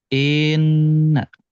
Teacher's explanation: I-nya malah dipanjangin. Inna. Jadi seolah-olah antara i dan nun itu ada huruf ya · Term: menambah huruf